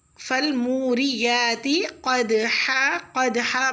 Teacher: قاف کو پر اور دال ساکن ہے، اس پہ قلقلہ ہوگا